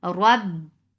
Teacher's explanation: Here it is heavy and attached with ba. Ba will get sifa of shidda. The sound will cut off abruptly.